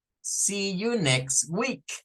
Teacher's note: See y next, dos palabras que tienen double E. Doble E se comporta siempre como una I, como la I del español, una I larga.